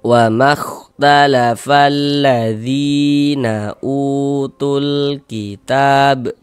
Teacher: Jika sebelah kanan ya sukun ada harokat kasroh, maka huruf yang memiliki harokat kasroh dibaca panjang begitu. Zi dibaca panjang, madu tabi'i panjang 2 harokat.